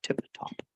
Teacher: you got to get a t and a p with the nice vowel shape of ah in between